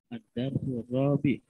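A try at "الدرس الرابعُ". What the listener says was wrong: Ad-darsur rabi'u, baca yang lengkap.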